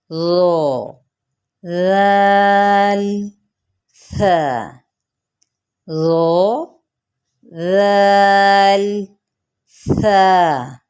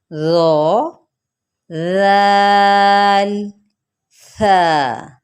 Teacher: زبان کی نوک ہے، اوپر والے سامنے کے 2 دانت بھی ہیں، لیکن تو، دال، تا یہ جڑ سے ادا ہو رہے تھے، جبکہ یہ اس میں صرف اتنا معمولی سا ڈفرینس ہے، یہ 2 دانتوں کے کنارے سے، یعنی جو آپ کی زبان کی نوک ہے نا وہ 2 اوپر والے جو دانت ہیں نا اس کے کنارے سے لگے تو یہ بڑے آسانی سے ادا ہو جائیں گے